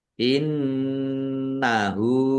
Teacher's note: nun tasdid bacaan ghunah atau mendengung ditahan biar tampak mendengung · Domir ha domah terbalik mad silah qosirah dibaca panjang dua harakat sama dengan mad thobi'i